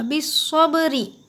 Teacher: बिस्सब्रि में सौद को मोटा पढ़िए, मुँह भर के, मोटा यानी मुँह भर के पढ़ना होगा